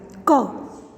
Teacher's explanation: क स्वर नहीं है इसमें, क के नीचे हलंत है। यह हिंदी की कंठ्य स्पर्श अल्प प्राण एवं अघोष ध्वनि है।